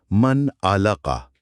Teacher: ہم من کو بالکل صاف پڑھیں گے، من نہ کہہ کر ناک میں نہیں گھمائیں گے، سیدھا من علقہ۔ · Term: اظہار